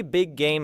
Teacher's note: that protects both sides of the phrase. Say big game slowly, feeling the back of the tongue prepare for G at the end of big and continue into the G at the beginning of game , then gradually reduce the effort while keeping the phrase recognizable.